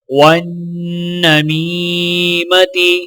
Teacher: نون مشدد ہے تو لہٰذا نون پر غنہ کیا جائے گا اور میم کو یا ساکنہ کے ساتھ ملاتے ہوئے ایک الف کے برابر کھینچ کر پڑھیں گے۔